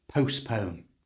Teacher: do not say the letter T in the middle of the word. It's not postpone, it's postpone.